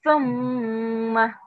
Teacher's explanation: you make the tha sound by taking your tongue out and touching your upper teeth. And then sing the letter tha.